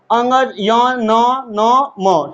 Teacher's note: ये इनकी ध्वनियां थोड़ी नाक से निकलती है इसलिए इसको हम लोग अनुनासिक के नाम से भी जानते हैं